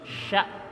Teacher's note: SY besar itu lidah tarik ke belakang